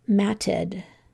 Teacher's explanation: I think that I'm actually making it sound like an I when I say that rather than an E